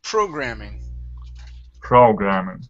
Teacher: programming the stress is at the very very beginning